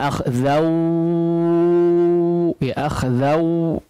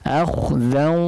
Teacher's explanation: Namanya idgham bi gunnah, artinya harus diiringi atau disertai dengan gunnah, berarti melibatkan khayshum